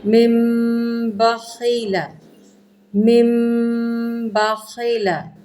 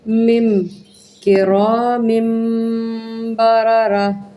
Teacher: من نہیں کرنا، اس کو اظہار نہیں کرنا بلکہ مم